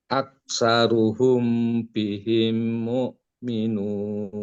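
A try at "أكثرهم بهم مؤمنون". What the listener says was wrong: Himnya panjang, humnya panjang. 3 ketukan, 3 harokat. Ditahan. Him.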